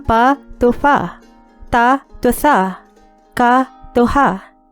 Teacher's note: Voiceless stops became fricatives, from pa to fa, ta to tha, ka to ha. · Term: Grimm's law